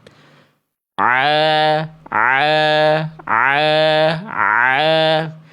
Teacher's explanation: Lalu tekan huruf ainnya dari tengah tenggorokan. A a a ya. Kalau a tepat, dia enggak masuk ke rongga hidung. · Kalau a tepat, dia enggak masuk ke rongga hidung. Ketika ditutup hidung kita enggak akan kerasa geli atau gatal.